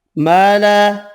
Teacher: دو الف مدہ ہیں، دونوں ایک ایک الف کی مقدار میں کھینچ کر پڑھیں گے